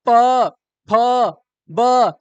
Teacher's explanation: जब दोनों होठ आपके सटेंगे तब आवाज आएगा